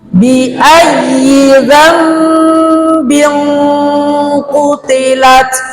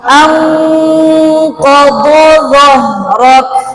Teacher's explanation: Dan qaf itu sifatnya isti'la, tebal.